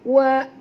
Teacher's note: Huruf sad kena baca tebal, kerana sad termasuk dalam huruf isti'lam.